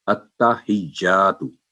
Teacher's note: तो बाद दफा अत्तहियातु, तो हा पर जबर या फतह पड़ जाती है, तो जब हम गौर करेंगे तो ये होगा अत्तहिज्जातु, यानी ता पर भी तशदीद है, वहां स्ट्रेस होगा, और जा पर भी तशदीद है, वहां स्ट्रेस होगा, लेकिन अत्ता की आवाज 1 सेकंड होगी स्ट्रेस के बाद, और हिज्जा क्योंकि आगे अलिफ है तो स्ट्रेस के बाद आगे 2 सेकंड लंबी करेंगे, हिज्जातु।